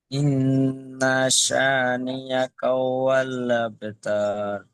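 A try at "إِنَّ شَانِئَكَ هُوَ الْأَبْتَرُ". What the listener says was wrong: এখানে তাটি আপনার টান হয়ে গেছে, আর এখানে দেখেন আলিফের ডান দিকে জাবার আছে, আলিফের ডান দিকে জাবার আছে, তাই এটি আলিফ মাদ্দা হবে। আলিফ মাদ্দাকে এক আলিফ টান দিয়ে পড়তে হয় আমরা সকলে জানি, তাই সেই হিসাবে আর নুন তাসদিদ এক আলিফ পরিমাণ গুণনা করে পড়তে হয়। নুন তাসদিদকে এক আলিফ গুণনা হবে, সাটি এক আলিফ টান হবে, আর বাকি কোনো জায়গায় আর টান হবে না।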